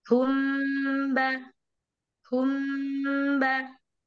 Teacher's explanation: Contoh nuruhum ini mim hum, tapi kita pindah ke huruf yang lain yaitu huruf ba, maka keluarnya ba, sama-sama di kedua bibir ya · jadi ketika huruf mim sukun bertemu dengan huruf ba itu pas mulainya kita mengucapkan huruf mim, tapi pas keluarnya kita mengucapkan huruf ba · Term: Ikhfa Syafawi, Ikhfa syafawi, ikhfa syafawi